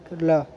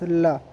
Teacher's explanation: ये एक special alphabet है कोरियन का, जिसे हम कुछ आर और एल के दरमियान में साउंड करते हैं